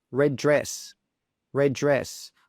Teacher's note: we've got two D sounds next to each other. So we simply just say one of them